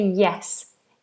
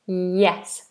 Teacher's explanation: middle of the tongue is high